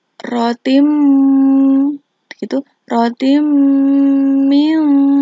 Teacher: Tain bertemu dengan mim yaitu hukum bacaannya adalah itu Gom Bighunnah tanwin dimasukkan ke dalam huruf mim disertai dengan dengung